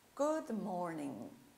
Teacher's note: vocês perceberam que o G eu não pronunciei?